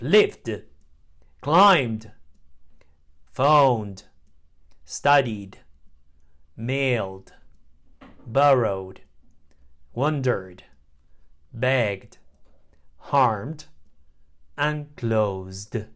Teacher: the D sound find Ed is pronounced d after voiced sounds the D is Blended with a previous consonant and not pronounced as an extra syllable